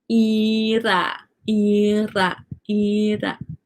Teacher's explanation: Your tongue just touches, it flaps, it touches the roof of your mouth one time. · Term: flap R